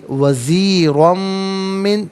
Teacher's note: ہے، اسے را کو پر کر کے پڑھا جائے گا، اور دو زبر کی ترمیم کو من کی میم کے ساتھ ملا کر میم کی آواز کو غننے کے ساتھ ادا کریں گے ، یہاں یرملون کا قاعدہ اپلائی ہوگا، تو اسے ہم پڑھیں